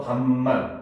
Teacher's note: 밥만 같은 경우도 비읍이 역시 대표음은 그대로 비읍이니까 비읍 그대로 쓰였고 근데 미음 앞에서 비읍이 비음으로 변해서 밥만 이렇게 된다는 거죠. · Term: 비음화